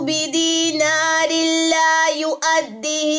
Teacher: دو زیر کے بعد لام ہے، لام را کی جیسے ہم نے بات کی تھی، ادغام بلا غنہ، یہاں پہ بھی ہم غنہ نہیں کرتے کیونکہ یہ ریڈ والی سائڈ سے آیا ہے لام.